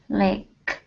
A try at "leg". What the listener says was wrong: Now, what you're pronouncing is a K sound, saying lake. Okay, the difference here is that you're saying lake like a lago, right? So, lake. This is leg, yeah. Like goal. Like if you were to say goal, that is that same G. Leg. Leg.